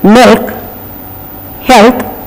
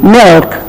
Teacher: dark l so what is this dark variety it is milk the tongue goes and touches the middle of the pallette the sound is slightly different that's called the dark L